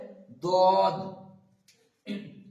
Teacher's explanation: দাঁতের মানে জীবের কিনারা মানে দাঁতের সঙ্গে লাগিয়ে উচ্চারিত হবে